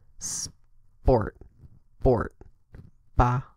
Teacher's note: the second one is an unvoiced B written with a p it sounds like saying sport without the letter s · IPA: /p/